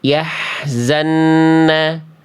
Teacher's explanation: Yang A salah karena nun tasdidnya an-nya kurang ditahan.